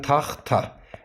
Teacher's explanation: söz ortasında yanaşı gələn iki kar samitdən ikincisi T olarsa tələffüzdə D-yə çevrilər. Məsələn, taxta.